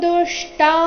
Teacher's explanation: ದುಷ್ಟಾಸು ದು ಮೇಲೆ ಆಘಾತ